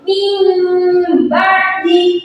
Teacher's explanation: Cara membacanya yaitu dengan menukar bunyi nun sukun atau tanwin dengan huruf mim mati disertai dengan dengung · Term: iklab